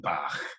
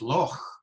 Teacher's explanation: pronounced with what's technically called a velar fricative, the ch sound towards the back of the mouth